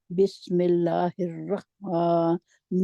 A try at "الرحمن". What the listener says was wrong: پھر ہا کو نکالے. رخ آپ خا پڑھ رہے ہیں. خا نہیں ہے جی. آپ مخرج خا کے اوپر جا رہے ہیں. یہ ہا ہے.